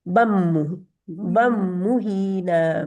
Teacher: बन का नून जो है ना वो आगे मीम में मर्ज हो गया है मिल गया है